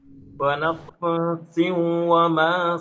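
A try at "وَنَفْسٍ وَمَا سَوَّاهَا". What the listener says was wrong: nafsin, jangan diseret juga.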